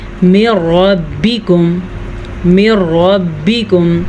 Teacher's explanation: نون ساکن یا تنوین کے بعد لام یا را آ جائے تو ادغام بلا غنہ ہوتا ہے، یعنی کہ غننے کے بغیر پڑھتے ہیں۔ ہم اس کو پڑھیں گے من ربکم، من ربکم، را کو پر پڑھیں گے اور ملا کے بغیر غننے کے پڑھیں گے۔